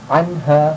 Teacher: dibacanya jelas tanpa dengung ya dibaca jelas